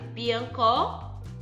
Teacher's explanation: o pó é a sílaba tônica Então essa palavra é chamada de oxítona